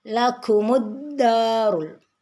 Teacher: dal ada tasdid di atasnya sehingga dibacanya ditekan yang kuat